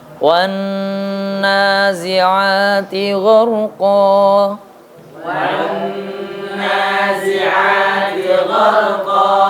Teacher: gunah itu makhrajnya ada di rongga hidung